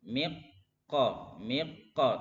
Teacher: Maka makhrajnya dari min, dari mim langsung ke qaf ya.